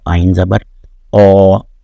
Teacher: یہ وسط حلق کی تھر تھراہٹ سے، اور اس میں گلا جو ہے اس کو ایپیگلاٹس کو اندر کی جانب پچکایا جاتا ہے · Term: آئین کی آواز